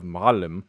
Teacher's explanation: with the stress on the first syllable